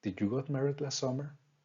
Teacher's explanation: How I am using a rising pattern.